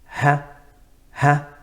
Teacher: The ha, which is the second letter from the same area, from where the vocal cords are, aqsa al-halq, the deepest part of the halq. When the ha comes out, the vocal cords are partially open. Ha, ha. And when we stop on the ha, fee, the vocal cords are slightly open.